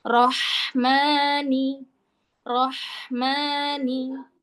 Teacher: Roh. Ingat, huruf H ngalir suara dan udara sampai huruf berikutnya. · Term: hak pedas, H pedas